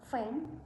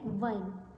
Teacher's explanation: F is a voiceless labiodental fricative, while V or V is voice labiodental fricative.